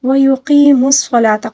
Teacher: قاف کو بھی پر پڑھیں گے اور یا مدہ کی ادائیگی بھی کریں گے، صاد کو بھی پر پڑھیں گے۔